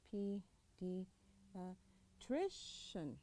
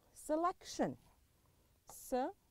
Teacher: فيطلع صوتك شوية التكة, الشدة حقك حتكون على المقطع اللي قبل الأخير بسبب وجود الشن في النهاية